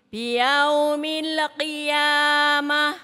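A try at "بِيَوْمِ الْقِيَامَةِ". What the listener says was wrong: Lidahnya lihat Bu, lidah. Pakai U. Jangan ke O. Itu namanya bacaan madlin.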